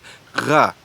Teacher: the voiced velar fricative